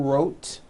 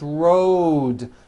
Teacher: Road also has a voiced D ending. Road. It's not wrote, unvoiced, it's road. The whole word is voiced.